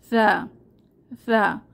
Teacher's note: আমরা জেনেছি এই হরফটির মাখরাজ বা উচ্চারণের স্থান জিহবার আগা দাঁতের আগা, নরম আওয়াজ। আর এই হরফটি উচ্চারণের সময় সা বলার সময় মুখ থেকে হালকা বাতাস বের হয়, সা সা, এবং আওয়াজ পাতলা থাকে।